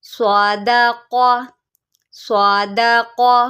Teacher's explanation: یہ صاد ہے، اس کو آپ سادہ نہیں پڑھیں گے، ٹھیک ہے. یہ صاد ہے، اس کو آپ موٹا کر کے پڑھیں گے، یہ بھی حروف مستعلیہ میں سے ہے